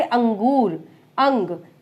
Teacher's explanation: अनुस्वार में नाक से ध्वनि जो है उच्चरित होती है